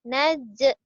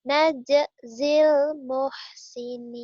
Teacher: Di sini jim mati menjadi qalqalah.